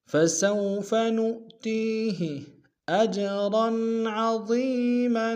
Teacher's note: اج میں حمزہ کو جیم کے سامنے لانا ہے، اور پھر قلقلہ کریں گے ، اور آ کو تنوین غنہ کریں گے، عین گہرے سے